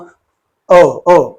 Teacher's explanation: when the vocal cords are brought together, when the sound is produced, that's called a glottal stop.